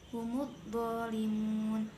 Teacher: Humud dho ini bacaan alif lam syamsiyah sebab alif lam bertemu huruf dho, cara membacanya dimasukkan ke huruf berikutnya